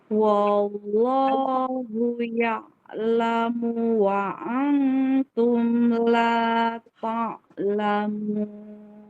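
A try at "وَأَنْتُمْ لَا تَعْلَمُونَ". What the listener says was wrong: Nah, barusan dan ikhfanya masih kurang.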